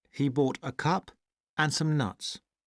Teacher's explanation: We have falling intonation only on the last word in the sentence. And everything else before it, like other things that are stressed, have rising intonation.